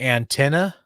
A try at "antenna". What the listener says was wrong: I feel like you're just mostly over pronouncing the T